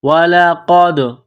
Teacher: قاف کو موٹا کرنا ہے، قاف کو دال کے ساتھ ملانا ہے، دال ساکن ہے تو یہاں پر قلقلہ کریں گے